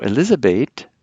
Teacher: the final th is pronounced like a t instead of a th sound in English